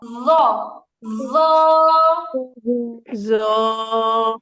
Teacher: এখানে জিহ্বার আগা কোনোভাবেই তালু স্পর্শ করবে না, দাঁতের আগা।